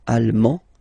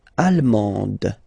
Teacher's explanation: you don't pronounce the final D, but then you pronounce it here for the feminine form